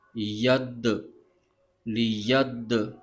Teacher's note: تو دال قلقلہ والا حرف ہے، تو اس کو جماؤ کے ساتھ پڑھیں گے